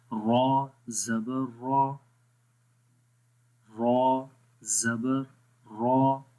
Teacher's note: زبان کی جو بیک سائڈ یہ اوپر کی طرف جا رہی ہے جب اس کو موٹا پڑھیں گے، ٹھیک ہے۔ تو مطلب کہ جب آواز موٹا ہم کرتے ہیں تو اس وقت آواز موٹی جب ہوتی ہے تو اس وقت بیک سائڈ اوپر کی طرف اٹھتی ہے، مطلب بیک سائڈ اوپر کی طرف اٹھنے کا مطلب یہ ہوتا ہے کہ آواز اوپر کی طرف جاتی ہے، ٹھیک ہے۔